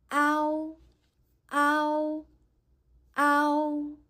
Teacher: a should be pronounced longer and louder while u is shorter and lighter this sound is similar to the letter o w in english · first pronounce the simple vowel ah, and gradually switch to the sound oo. And ah should be pronounced longer and louder, while oo is shorter and lighter. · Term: falling compound